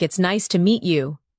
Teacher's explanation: When you listen to sentences like "It's nice to meet you," notice the rise and fall of the tone. The voice goes up slightly at nice and falls gently at you.